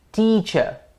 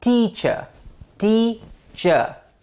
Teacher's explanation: So we have the longer T, the higher T, and the louder T. So all three are combined in one word to say teacher.